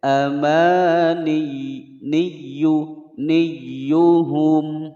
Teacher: Ma panjang dua ketukan mad tabi'i. Niyu pada ya yang bertasdid ini tidak boleh didengungkan karena tidak ada hukum idgham di sini, ditekan saja. Amani niyuhum, tidak boleh membaca amaniyuhum ya, tidak ada hukum gunnah di sini.